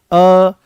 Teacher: ये अर्ध विवृत्त हैं। अर्ध विवृत्त का मतलब यह है कि मुख यहां पर आधा खुलेगा।